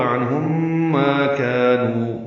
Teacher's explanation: اغنا عنہم نون ساکن پہ اظہار ہے، عین وسط حلق سے ادا ہوگا، ہا اقصى حلق سے نکالیں گے. عنہم میم ساکن کے بعد میم آنے کی وجہ سے غنہ ہوگا